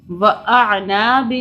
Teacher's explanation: عین حلق سے نکلے گا